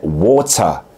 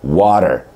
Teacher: Amerikan aksanında t harfi iki tane ünlü sesin arasına geliyorsa genellikle D diye telaffuz edilir yani Örneğin su kelimesi İngiliz ingilizcesinde water iken net bir T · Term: Amerikan aksanıyla